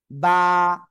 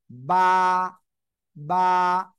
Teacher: আমার দিকে আমার দিকে এই যে দুই ঠোঁট না এই যে দুই ঠোঁটের ভিজা অংশ থেকে উচ্চারণ হবে